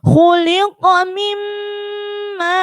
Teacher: Bacaan mat wajib muttasil. Artinya dibaca panjang 2,5 alif atau 5 harokat atau 5 ketukan.